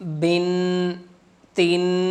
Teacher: کسی بھی حرف کے ساتھ، کسی کے حرف کے نیچے 2 زیر، یعنی کہ ایک زیر کے ساتھ ایک اور زیر لگا دیں تو 2 زیر بن جاتی ہیں، یعنی کہ 2 زیر کی تنوین بن جاتی ہے۔ 2 زیر کی تنوین کو بھی غنہ کے ساتھ پڑھا جاتا ہے